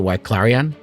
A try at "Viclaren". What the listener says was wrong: The Viclaren is They don't say W's, right?